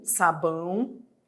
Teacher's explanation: Há um ditongo aqui, entre, né, o A e o O, que tem som de U